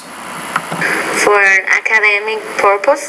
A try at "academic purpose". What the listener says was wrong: I want to say they're academic purpose, so you have some word stress issues, academic.